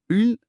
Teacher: உங்க நாவின் நுனியை மேல்வாய் அண்ணத்தின் சரியா நடுப்பகுதியை தொடும்படி செஞ்சு இன் என்று உச்சரித்து பாருங்க. நாக்கு நல்லா உள்ளே வளைந்து நடுப்பகுதியை தொடுவதை உங்களால் உணர முடியும். · ஆமா நாக்கு கொஞ்சம் பின்னோக்கி வளையுது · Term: மூன்று சுழி ந